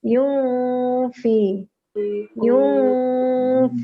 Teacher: Jadi nunnya kita ucapkan di tempat keluarnya huruf fa. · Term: ikhfa